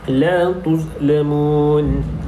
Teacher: kalimah la tuzlamun terdapat hukum mad arid lisukun, yang mana hukum huruf selepas mad merupakan huruf yang berbaris dan diwakafkan, maka perlu dibaca dengan 2, 4 ataupun 6 harakat